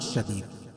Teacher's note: شدید وقف کی صورت میں دال کے اوپر قلقلہ کریں گے